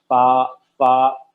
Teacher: فا کا مخرج ہے اوپر کے دو دانت، نیچے کے جو ہونٹ ہیں اس طرح اندرونی حصہ ٹچ ہوتا ہے